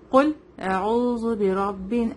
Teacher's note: قل قاف ہیوی ہوگا. ٹھیک ہے, قاف دس letter is come from the last part of the tongue